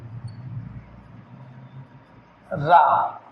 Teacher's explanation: उच्चारण में जिह्वा का अग्रभाग मसूड़े से लगकर कंपन करता है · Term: प्रकंपी